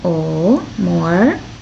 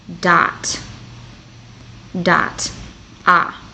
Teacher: o o has two different sounds if it's stressed vowel in the word it'll sound like o and then if it's not the stressed vowel it'll sound like ah